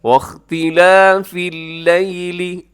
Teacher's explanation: اللیل اس میں یا لین ہے، یا ساکن سے پہلے لام کے اوپر زبر ہے، تو آپ نے یہاں پر اس کو نرمی کے ساتھ پڑھنا ہے، لیل نہیں کرنا، لیل نہیں بلکہ واختلاف اللیل۔